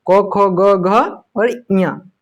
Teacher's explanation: पांचों वर्ण कंठ से उच्चारित होता है